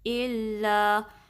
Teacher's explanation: جو پہلا لام ہے اللہ کا اس کو باریک رکھنا ہے، اس کو اللہ نہیں، اس میں زبان کو نہیں اٹھانا آپ نے · اس میں اللہ میں بھی آپ نے حمزہ کو لام سے ملانا ہے، لام پہ تشدید ہے تو تھوڑا سا ٹائم دیں گے. یہ جو لام یہ باریک رکھیں گے، ٹھیک ہے.